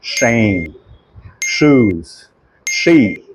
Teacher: પણ જ્યારે એસએચ એટલે કે એ સાઉન્ડ આવે ત્યારે શરણાઈનો શ બને છે. જીભ તમારી જો તાળવે અડે છે અને મોઢામાંથી ગરમ હવા નીકળે છે.